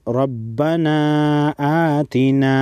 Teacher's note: را پر زبر ہے، را کو موٹا پڑھیں گے، چھوٹی مد کو 3 الف کے مقدار کھینچیں گے۔